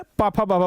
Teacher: पाफा बाबा बिना होठ का नहीं बुलाएगा। आप बिना होठ सटाए पापा बाबा बोल ही नहीं सकते हैं